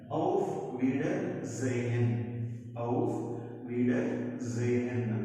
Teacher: కానీ ఇక్కడ రూల్ ఏంటి అంటే ఎస్ నార్మల్ గా సా sound, but if s follows by any vowel, that s sound changes to ja sound. So s తర్వాత vowel వచ్చింది కాబట్టి s sound changes to za